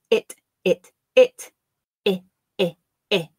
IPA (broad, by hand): ɪ